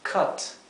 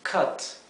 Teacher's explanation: embargo la pronunciación de la u es como si fuera eh una pronunciación intermedia entre una a y una e